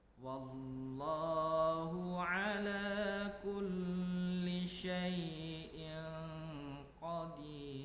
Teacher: Nah, ketika membaca ala kulli syai'in qadir, ketika membaca syai'in, nah ada tanwin bertemu dengan huruf qaf. Maka ketika tanwin bertemu dengan qaf, dia dibaca menjadi samar. Maka inilah yang disebut dengan ikhfa.